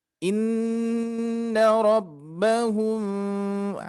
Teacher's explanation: Syafawi yang mana dia harus dibacanya dengan samar-samar ya tidak robbahum tidak dirapatkan dua bibirnya tapi disamarkan ada sedikit udara yang keluar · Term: Ikhfa Syafawi